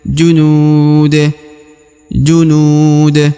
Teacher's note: Huruf NU dibaca panjang ya junud ya Dua atau empat harakat ya karena terdapat wau sukun sebelum huruf pemberhentian ya haditul junud